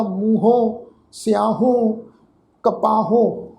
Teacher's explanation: ਉਹਨਾਂ ਸ਼ਬਦਾਂ ਦਾ ਜਿਹੜਾ ਉਚਾਰਨ ਆ ਆਪਣੇ ਤੋਂ ਪਹਿਲੇ ਅੱਖਰ ਉੱਪਰ ਜਿਹੜਾ ਹੈ ਬਿੰਦੀ ਸਹਿਤ ਨਾਸਕੀ ਉਚਾਰਨ ਹੋਏਗਾ। ਜਿਹੜਾ ਹਾਹਾ ਅੱਖਰ ਸਵਰ ਹੈ ਇਹ ਆਪਣੇ ਤੋਂ ਪਹਿਲੇ ਅੱਖਰ ਦੇ ਨਾਲ ਹੀ ਮਿਲਵਾਂ ਅੱਧਾ ਸਵਰ ਜਿਹੜਾ ਵਾ ਉਹ ਉਚਾਰਨ ਹੋਏਗਾ।